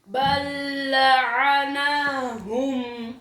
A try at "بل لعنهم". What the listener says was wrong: लंबा नहीं बल लअनहुम जोर लगाओ ना